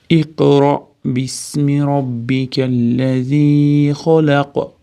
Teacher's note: Iqroda qofda qalqala bor, ro tafhim yo'g'on. Ro deganda hamza ustida sukun bilan kelyapti.